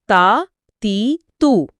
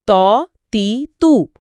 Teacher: جی، آواز میں بہت فرق ہے۔ تا ایک پتلی تیز آواز ہے، تا زبان کی نوک دانتوں کے پیچھے، اور تو ایک بھاری گونجدار آواز ہے، تو اس میں پورا منہ بھر جاتا ہے، زبان کی جڑ اوپر اٹھتی ہے۔